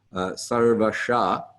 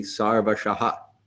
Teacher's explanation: we'll echo the vowel that precedes the H back